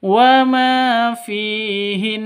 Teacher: fi juga sama panjang dua ketukan karena ada ya mati diawali dengan kasrah ya mad asli atau mad thabi'i.